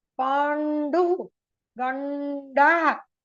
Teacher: When you say it is not Panduhu, it's Pandu. Your tongue should roll back to the Murda, to the palate.